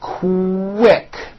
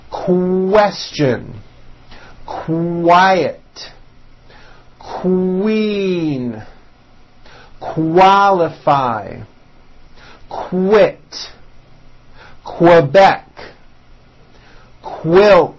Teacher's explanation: the word quick is pronounced with a k and a strong W sound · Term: Q sound